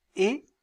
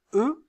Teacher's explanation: Quand je prononce et, mes lèvres sont étirées. Lorsque je prononce eux, vous sentez qu'elles sont arrondies.